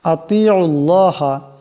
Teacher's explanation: এখানে ত আছে, আওয়াজটা মোটা করিয়া পড়তে হবে। আতিউল্লাহ পড়লে শুদ্ধ হবে না।